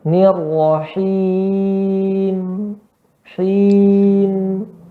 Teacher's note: Berarti ada dengungnya. Tetap ada dengungnya dan mim sifatnya nanti dia mengalir suaranya.